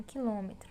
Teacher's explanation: circunflexo indica que a vogal possui timbre fechado